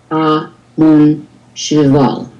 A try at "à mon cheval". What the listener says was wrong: Cheval. And do say the ending L. I know that's not in the rules of pronunciation. I mean, well, it's an exception of the rules of pronunciation, right? But in this case, we do say cheval.